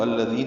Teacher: یہاں سے شروع کریں گے تو الذین ہوتا ہے، ذال نرمی سے پڑھ جائے گا، ذی یائے مدہ ہے، دو حرکات لمبا کریں گے